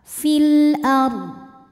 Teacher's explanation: Huruf ra dibunyikan secara tafkhim karena didahului harokat fathah ro sukunnya ya, maka dibunyikan dengan tebal.